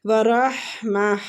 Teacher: ہا وسط الحلق سے نکلے گا